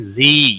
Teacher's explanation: زی یا مدہ ہے 1 الف کے برابر کھینچ کر پڑھیں گے